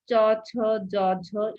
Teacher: সেটা তালু থেকে উৎপন্ন হচ্ছে তখন সেটার নাম হলো তালব্য ধ্বনি অর্থাৎ আমার জিহ্বা চ্যাপ্টা ভাবে গিয়ে তালুকে স্পর্শ করছে